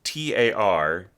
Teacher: with a very pronounced Australasian accent, ah is AR